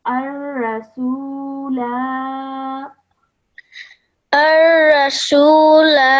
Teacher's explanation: when we're pausing, that Alif Zaida is now brought back into our pronunciation, and so we would pronounce this Alif.